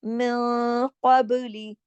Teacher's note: ادھر اخفا حقیقی ہو رہا ہے، نون ساکن کے بعد قاف آ رہا ہے، موٹا حرف آتا ہے تو غنہ، جب ہم اخفا کرتے ہیں تو اس میں آواز میں موٹا پن دکھائی دیتا ہے.